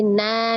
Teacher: madwat maka cara bacanya dari nan menjadi na dua harakat ya fathah tanwin menjadi fathah dua harakat ketika diwakafkan tapi ketika diwasal maka berlaku tanwin ketemu dengan huruf wau Idam